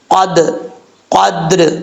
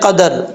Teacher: دال کے اوپر زبر پڑھا جا رہا ہے، ایسا نہیں پڑھنا، دال ساکن ہے